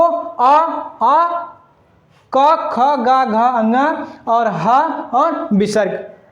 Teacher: अकुह विसर्गनीय नाम कंठा मतलब कंठ से उच्चारित होने वाले वर्ण